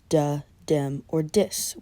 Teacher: This means that words such as the, them, or this are often pronounced with a D sound